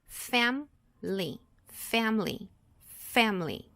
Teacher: Quando a gente pronuncia ela, a gente não vai pronunciar a letra I, ok? É como se são só apenas duas sílabas.